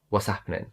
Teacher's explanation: So you don't say what is happening. The sound that I'm dropping is the T sound.